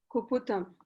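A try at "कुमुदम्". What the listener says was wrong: Not Kuputam. Very Pu. It is Mu.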